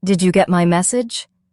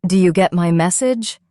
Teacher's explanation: You may notice that did you becomes du. This is such a common sound in fast English.